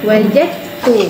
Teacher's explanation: Sebab dal tu dah hilang, dia dah masuk terus dalam huruf ta. Ta tu dah mewakili dua huruf. · Kalau kita baca wajadtu, ada bunyi dal tak? Tak ada. Kita terus bunyikan ta kan? Wajadtu. Tu idgham kamil, dia masuk secara sempurna.